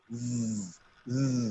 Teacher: When you produce the sound long z, you can feel the vibration in your vocal cord. It is a voiced consonant.